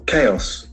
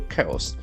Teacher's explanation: Accent falls on the first syllable, chaos.